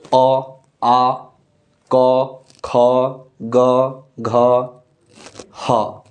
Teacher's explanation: प्राण वायु जो निकल रही है वो कंठ को स्पर्श करते हुए निकल रही है